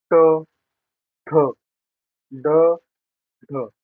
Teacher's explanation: आपली जी टाळूला वरच्या भागीला उलटी होऊन लागत असते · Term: मूर्धन्य